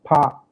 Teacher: when we pronounce power a lot of air goes out from our mouth so that kind of creates a blow there are some syllables